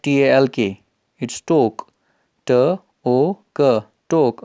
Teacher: आप इसको ठोक भी पढ़ सकते हो क्योंकि ये एस्पिरेट होता है ट इन द बिगनिंग।